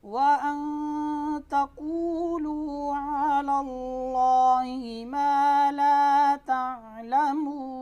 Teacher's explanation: واو مدہ کو ایک الف کی مقدار کے برابر کیا ہے، کھینچتے ہیں، لمبا کرتے ہیں۔ ایک الف کی مقدار بند انگلی کو کھولنے میں جتنی دیر لگتی ہے اتنی الف کی مقدار ہے۔